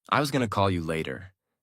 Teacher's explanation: Going to becomes gonna. The whole sentence flows more smoothly.